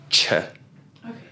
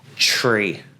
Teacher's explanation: your TR is going to equal a CH sound. So it's going to be ch.